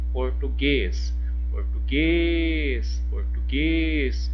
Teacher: Olha, o guês foi a última sílaba. Então, eu tenho o que? Uma oxítona.